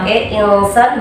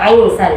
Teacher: Insan bukan ainsan, jadi huruf hamzahnya tidak boleh dibaca ain